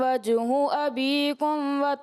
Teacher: یہ کاف تھوڑا سا آپ کا پر کی طرف محسوس ہو رہا تھا، تو کوشش کریں اس کو باریک رکھیں